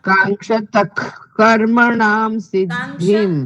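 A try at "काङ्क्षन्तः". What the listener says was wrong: કાંક્ષંત નકાર હજુ બોલવાનો રહી જાય છે. નથી, કાંક્ષંત. કાંક્ષંત. તો પણ વચ્ચે નકાર ભૂલી જવાય છે તમારે.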